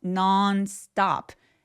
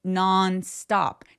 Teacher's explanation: Non stop 강세 두 번 옵니다.